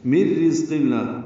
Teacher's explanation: نون ساکن کے بعد را آنے کی وجہ سے ادغام ہے، اور یہ ادغام کامل ہے، نون کی آواز ختم ہو جائے گی ، را کو باریک پڑھیں گے، ذات سے ملائیں گے، ذات